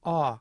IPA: ɔ